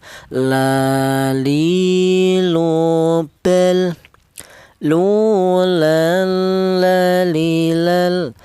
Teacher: keluarnya huruf berasal dari ujung lidah menyentuh langit-langit mulut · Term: huruf lam